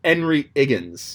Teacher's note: there are a number of accents where the h just disappears